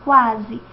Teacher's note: a parte final do ditongo é mais proeminente do que a parte inicial · esse U é mais fraquinho do que o A